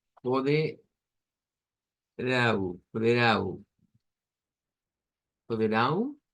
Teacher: Las dos son nasalizadas, tanto la A como la U, y pues eso lo representamos por esa N.